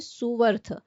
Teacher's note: वैसा ही रूल उ या ऊ का है। जब दोनों उ के साथ अ जुड़ता है तो बीच में व शब्द आता है। जैसे सु के अंत में उ आ रहा है।